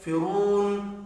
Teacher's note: فرون، را پر پڑھا جائے گا، واو مدہ کو 1 الف کے برابر کھینچ کر پڑھیں گے۔